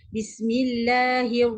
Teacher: kita akan muncungkan mulut kita sebab apa kita muncung sebab kita nak masuk kepada huruf ra